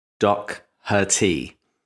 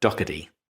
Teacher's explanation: was actually closer to the pronunciation Doc Herty, But yes, in my lazy American, the T sounds like a D. So, Dockady.